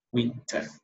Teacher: So you're not gonna say winter. No, the R is not to be pronounced, it's silent.